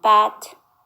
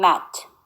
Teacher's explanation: To produce bilabial consonants, we use both lips together